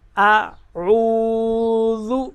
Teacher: یہاں پہ او کو لمبا کریں گے کیونکہ ساتھ میں واو جزم والی ہے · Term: واو مدہ